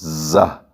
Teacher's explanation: سیٹی کی آواز کے ساتھ ہم اسے پڑھیں گے رگڑ کے ساتھ زہ، یہ زہ، سین اور صاد، یہ ان تینوں کا ایک ہی مخرج ہے۔